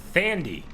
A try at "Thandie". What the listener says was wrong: It's Tandy. Yeah, like Thomas.